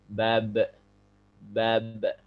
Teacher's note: karena ba ini termasuk huruf yang mantul atau yang dikenal dengan qalqalah, maka setiap sukun dia ada suara pantulannya.